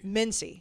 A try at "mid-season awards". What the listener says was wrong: You've said it multiple times. I'm like, why are you calling it? Mid-season awards. But you keep saying it so quick, it sounds like Mincy Awards. Mid-season. Enunciate.